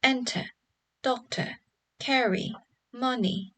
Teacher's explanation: the words like enter, doctor, carry, money will have stress on the first syllable.